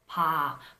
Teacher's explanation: So the p-up in the first syllable, 바보, pa, that's the pa that I've been talking about all throughout this video. It's the one that is unvoiced with minimal aspiration, pa. But when you say 보, 바보, 바보, 보, then it becomes a voiced consonant.